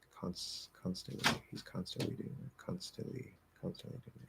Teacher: you actually don't have to nasalize the vowel at all. You can just drop the N completely. Don't nasalize the vowel and either do a stop T or no T.